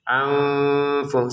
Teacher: Nun sukun ketemu fa dengan samar.